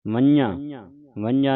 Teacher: ਨੱਕ ਦੇ ਵਿੱਚ ਉਚਾਰਨ ਹੋਵੇਗਾ